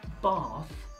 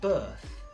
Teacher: /ɑ:/ is technically called the “Open Back Unrounded Vowel”. So, the mouth is more open than the /ɜ:/ and the tongue is further back.